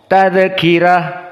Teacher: dia fathah ro tetapi sebelumnya kasrah menjadi muraqqoh